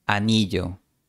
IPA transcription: a'ni.ʝo